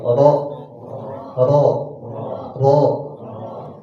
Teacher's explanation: Kalau ro ya, dia agak ke belakang, ke punggung lidahnya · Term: huruf ro